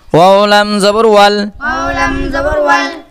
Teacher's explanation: এই ওয়াও আর পেশ উচ্চারণ করার সময় আমরা দুই ঠোঁট গোল করে ফেলবো